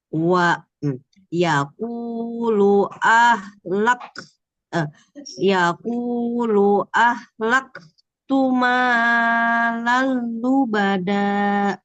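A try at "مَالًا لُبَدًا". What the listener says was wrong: Namanya jangan terlalu panjang. Malalu bada. Langsung. Malalu bada. Lalu bada.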